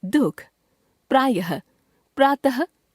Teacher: प्रायः यह शब्दों के अंत में आता है और ह जैसा उच्चारण देता है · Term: विसर्ग